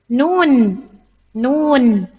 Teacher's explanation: Ujung lisan kita menyentuh langit-langit yang ada di atasnya. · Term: huruf nun